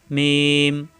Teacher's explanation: মিম দুই ঠোঁট থেকে উচ্চারণ মিলানো ঠোঁট ছেড়ে দিয়ে আবার মিলালেই হয়ে যায় মিম